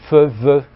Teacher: des labiodentales qui sont comme fe, ve, qui sont articulées avec la lèvre et les dents